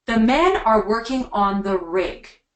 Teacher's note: way to make a statement your voice goes down